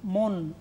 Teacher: দন্তন্য মনো চোরা বলছি না, মন, অর্থাৎ দন্তন্যের নিচে হসন্ত উচ্চারণ করা হচ্ছে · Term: রুদ্ধ দল